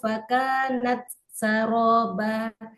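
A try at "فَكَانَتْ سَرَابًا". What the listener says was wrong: Tampakkan hamasnya. Fakanat saroba. Fakanat saroba. Berarti kurang ke depan. Dorong lagi ke depan aja.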